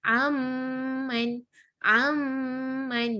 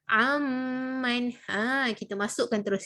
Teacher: Kita tidak membunyikan bacaan tanwin ataupun nun ini, tetapi kita bunyikan terus kepada makhraj huruf mim. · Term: dengung